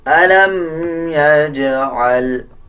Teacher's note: أَلَمْ يَجْعَلْ، جیم کے اوپر جزم ہے، قلقلہ کیا جائے گا